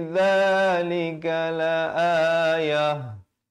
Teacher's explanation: Kalau waqaf di sini, ta marbutah ditukarkan kepada bunyi ha